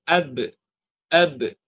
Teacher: kita menekankan huruf ba tersebut pada bibir menyebabkan Akan terhasilnya bunyi qol-qolah tulah. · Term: sifat qalqalah, qalqalah